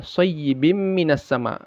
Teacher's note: Ya, dimasukkan lalu didengungkan, tidak dibaca bin tapi bim, masuk dia ke mimnya. Ya, lebur ya, lebur dia ke mimnya dan ada gunnahnya. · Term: idgham bi gunnah